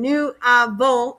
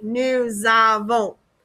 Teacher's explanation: when you have a consonant like s and a vowel when you link them together it makes this z sound so instead of saying new ah volt you say nu zavo